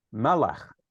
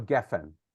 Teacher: accent on the first syllable